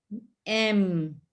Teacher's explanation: are coming from the nose or taking the nose nasal sound so it is using not only the mouth but also the nose